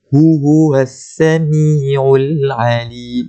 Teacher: Sin tu kena bunyi sifat dia hams, bunyi sin, keluarkan angin dia tu.